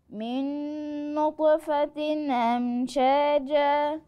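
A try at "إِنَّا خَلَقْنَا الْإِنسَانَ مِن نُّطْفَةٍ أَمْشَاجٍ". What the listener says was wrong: لو هتقف هتقف على ساكن وبعدين هي مش منصوبه دي مكسوره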